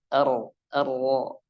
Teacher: di huruf ro takrirnya getarannya harus kerasa